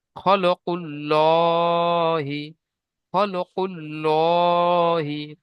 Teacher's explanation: আল্লাহর নামের আগের অক্ষরে পেশ আসার কারণে আল্লাহর নামকে পুর করে পড়তে হবে